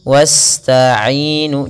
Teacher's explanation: Pada lafaz bacaan wasta'inu, sempurnakan aliran dalam bacaan sinnya, karena di sini sin cara membacanya adalah kita alirkan nafasnya wasta'inu, jangan jangan ditahan, karena dia huruf sin, huruf yang dia harus dikeluarkan nafasnya, atau kita kenal dengan sifatnya adalah sifat hamas dan sifat sofirnya berdesis.